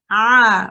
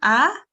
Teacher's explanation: this is a letter from the throat and you have to constrict your throat in order for the letter to come out correctly